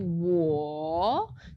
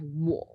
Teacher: So instead of 我, that sort of round third tone, we have 我, which is just a little bit curt. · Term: half third tone